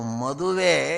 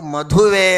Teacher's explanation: ಸಾಮಾನ್ಯವಾಗಿ ಮದುವೆ ಅಂದರೆ ಇದು ಸ್ವಲ್ಪ ಅಲ್ಪಪ್ರಾಣ ಮಹಾಪ್ರಾಣ ಅಂತ ಇರುತ್ತೆ. ಮದುವೆ ಇದು ಅಲ್ಪಪ್ರಾಣದ್ದು, ಮಧುವೆ ಇದು ಮಹಾಪ್ರಾಣ